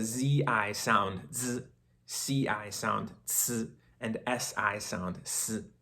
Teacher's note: they're all produced in pretty much the same exact location of your mouth your tongue and your teeth are pretty much doing the same thing the difference is between the three are how they begin and